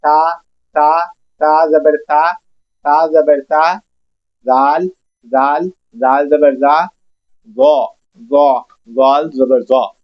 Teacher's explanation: ان تینوں کے مخرج سیٹی کے بغیر ادا ہوں گے